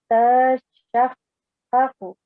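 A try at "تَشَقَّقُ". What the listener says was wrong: हाँ जी, ता को जल्दी पढ़ना है आपने, जो पहले वाला मुतहरिक ता है इसको जरा जल्दी पढ़िए। तशक्काकु, ठीक है, तशक्काकु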